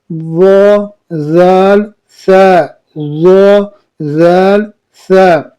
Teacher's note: زبان کا سر اور اوپر کے دانتوں کے اندرونی کناروں سے ادا ہوتی ہے